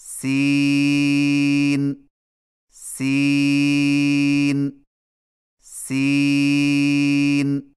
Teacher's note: سین کی ادائیگی میں زبان کی نوک کو ثنایا سفلی کے کناروں سے مضبوطی سے لگا کر باریک اور سیٹی جیسی آواز میں پڑھیں